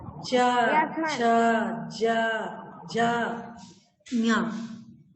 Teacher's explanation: चा वर्ग बोलते हैं तो तालु छू रहा है। तालु यानी इधर का भाग है, गले के इधर जबड़े के ऊपर का भाग है तालु।